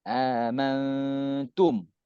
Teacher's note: kita ni dengungkan kerana nun mati berjumpa huruf ta